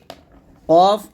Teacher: কফ উচ্চারণ করতে হবে জিহ্বার গোড়া তার বরাবর উপরে তালের সঙ্গে লাগিয়ে এই যে দেখুন জিহ্বার গোড়াটা তার বর্গ উপরে তালের সঙ্গে লাগছে